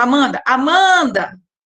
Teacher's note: Então, é uma palavra paroxítona porque a penúltima sílaba dela é a mais forte, é a tônica